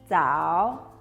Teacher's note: ini sama dengan pengucapan C, tapi ujung lidah kamu harus nempel ya di bagian depan gigi